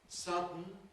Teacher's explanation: 'Sudden' /ˈsʌdn̩/ still has two syllables even with syllabic /n̩/.